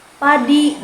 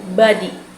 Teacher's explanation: Bunyi P merupakan konsonan bilabial tak bersuara, sedangkan B adalah konsonan bilabial bersuara.